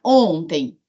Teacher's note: tem esse M final vira um I nasal